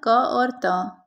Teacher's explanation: निम्नांकित में अघोष अल्प प्राण ध्वनि कौन सी है तो क और त